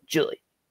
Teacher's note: if i'm not careful with my name i can swallow that long e on the end